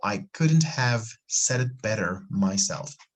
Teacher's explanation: so once again we are connecting set it and flapping better myself don't forget here we have a schwa better better okay very